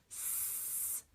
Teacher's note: So when you hear s, you're hearing voiceless. you're hearing the air squeeze past the tongue that's right there behind the teeth.